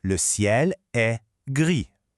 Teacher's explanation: Notice that the S at the end of gris is completely silent.